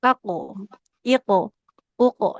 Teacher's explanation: qalqalah qof dia harus ikut tebal ya. taqu iq uq jadi panturannya dia ikut tebal sesuai dengan hurufnya seperti itu.